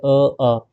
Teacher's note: कंठ, गर्दन के अंदर से निकलते हैं, जैसे अ, आ, ठीक है, बोल के देखो आप, कंठ से निकल रहे हैं, ठीक है।